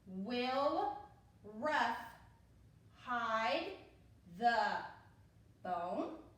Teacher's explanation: with the question it's going to go up a little bit because you're asking something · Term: question mark